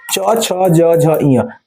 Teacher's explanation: च छ ज झ य तालू से होते हैं